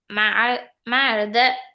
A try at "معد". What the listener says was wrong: மஅத. நீட்ட வேணாம். மஅத இல்ல, மஅத.